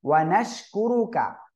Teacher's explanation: ওয়ানাশ কুরুকা, শিন শাসা শব্দ না হলে সঠিক উচ্চারণ হবে না, কুরু রর উপরে পেশ মোটা করে পড়তে হবে